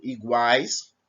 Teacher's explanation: Por exemplo, iguais, nós temos um som de 3 vogais juntas, certo? São 3 vogais juntas e o som equivale ao quê? A uma semivogal, uma vogal e uma semivogal. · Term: tritongo